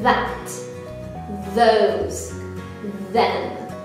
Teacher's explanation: If you put your hand here, you should feel a vibration. So tongue out, teeth down, and use your voice box. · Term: TH sound